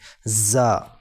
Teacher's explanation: زا سخت اور باریک ہے، یعنی اس کو جما کر پڑھیں گے